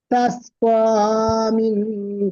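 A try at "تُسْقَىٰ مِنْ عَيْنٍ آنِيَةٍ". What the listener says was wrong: তাস্ক হচ্ছে কেন? তুস্ক হবে, তা পেশ আছে তো।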